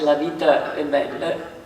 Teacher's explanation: poner la schwa, que es un sonido de vocal neutra